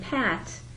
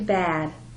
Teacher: sometimes they will voice the sound turning Pat into bad